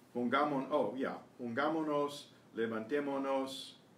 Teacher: When you have the nos following, which would be the mos, the first S drops away.